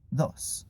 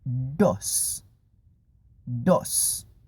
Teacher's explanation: en español el sonido de la d es más dental